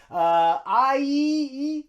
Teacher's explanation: the long I sound is a diphthong that means there's two vowel sounds